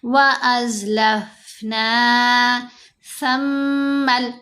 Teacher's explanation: سا کو نرم پڑھیں گے، میم کے اوپر ہم غنہ کریں گے کیونکہ میم مشدد ہے